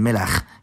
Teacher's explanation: With chet at the end, the last vowel becomes a